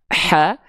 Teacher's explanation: Kalau H kecil dia dari tengah tenggorokan di sini karakter nafas yang keluar itu berbisik lebih lembut.